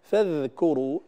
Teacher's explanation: الذال هنا مرققة فلا يصح تفخيمها كما قرأت الأخت قبل قليل فاذكروا، هذا خطأ، فاذكروا الذال دائما وأبدا مرققة فلا يصح تفخيمها، لأن الذال إذا فخمت تحولت إلى ظا وهذا حرف آخر، وبالتالي تتغير الكلمة إلى كلمة أخرى.